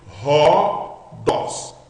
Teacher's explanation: Eu estou colocando um H do inglês na frente, que é o nosso R